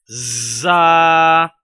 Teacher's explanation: زا کو ادا کرتے ہوئے سیٹی کی طرح دانتوں کو بند کر کے آواز نکالیں گے